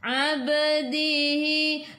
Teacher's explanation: Ai'u daripada kerongkong bukan daripada hidung. Ba qalqalah sughra lantunannya kecil.